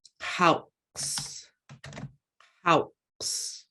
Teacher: we have a glottalized W, which is kind of like that glottalized L in that it just abruptly stops the sound of that letter.